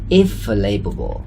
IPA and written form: if-əˈveɪləbəl (if available)